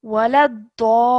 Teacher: And over here, this is stretching the sound of da, carrying it on for about 4 to 6 seconds because of the maddul kabir, and then joining it onto the lam with the ya madda.